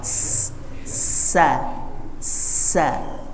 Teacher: Bunyinya di sela-sela gigi bagian depan, menabrak sela-sela gigi sehingga dia muncul sifat yang namanya safir